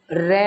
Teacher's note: पर कंपित या लुंठित व्यंजन रै होता है। जब हम इसका उच्चारण करते हैं तो हमारी जीवा में कंपन होता है, हमारी जीभ लुढ़कती है, इसलिए उसको परकंपित या लुठित व्यंजन बोला गया है।